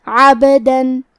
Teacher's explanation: کلمت عبدن میں با پہ جزم ہے لہذا ہمیں با کو قلقلہ سے پڑھنا ہے